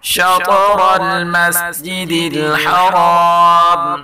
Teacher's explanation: طارا دونوں کو پر پڑھیں گے اور جو آخری را آ رہا ہے اس کو بھی پر پڑھیں گے اور تو میں کلکلا کریں گے